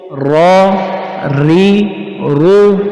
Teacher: اس میں را زبر موٹا ہوگا، را پیش بھی موٹا ہوگا اور را زیر باریک پڑا جائے گا